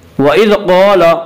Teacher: قاف کو پر پڑھیں گے، قاف حروف مستعلیہ میں سے ہے۔ حروف مستعلیہ 7 ہیں جو ہمیشہ ہر حال میں پر پڑھے جاتے ہیں۔